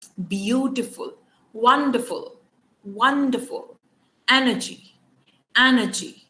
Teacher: so stress is usually on the first syllable